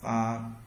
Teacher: Giống như s sắc trong tiếng Việt và đọc kéo dài âm ra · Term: thanh hai